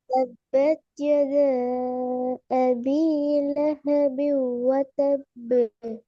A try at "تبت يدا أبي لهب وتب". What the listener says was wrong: நீட்டுறது போதாது. يدا أبي لهب وتب.